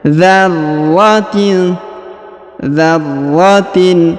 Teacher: huruf ra ditahan dan ditekan karena terdapat tanda tasdid atau penekanan